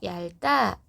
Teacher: 리을 비읍은 리을 발음해요